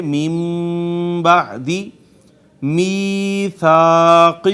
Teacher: با کا ما قبل اگر نون ساکن ہو تو وہ اسے چھوٹی میم سے بدل دیتی ہے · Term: اقلاب